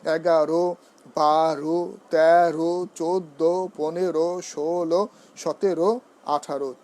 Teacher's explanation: এবার আসুন উচ্চারণের ক্ষেত্রে আমরা আরো কিছু নিয়ম জেনে নিই। সেটা হচ্ছে 11 থেকে 18 পর্যন্ত সংখ্যাবাচক শব্দের শেষে ঔকারন্ত উচ্চারিত হয়ে থাকে